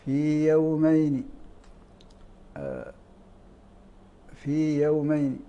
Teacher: الياء هنا وقعت ساكنه قبل مثلها ولكنه ليس سكونا صحيحا بل ساكنه سكون المد